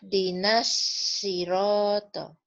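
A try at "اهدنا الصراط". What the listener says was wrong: Ya, itu kurang naik pangkal lidahnya, Bu. Naikin lagi, Bu. Biar tebalnya kedengeran.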